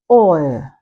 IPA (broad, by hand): ɔɪə